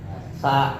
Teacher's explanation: pita suaranya ketika kita memproduksi sa itu tidak bergetar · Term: suara mahmus